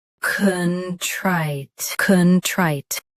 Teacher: Both US and UK have the same pronunciation of this word. Stress trite. Keep con soft and clear.